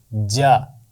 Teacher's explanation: زبان کے درمیان کا حصہ اور اوپر کا تالو، یہ جب آپس میں ملتے ہیں تو جیم کی آواز ادا ہوتی ہے